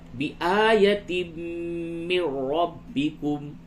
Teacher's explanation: تنوین کے بعد میم ہے، اس جگہ پہ ادغام مع الغنہ ہوگا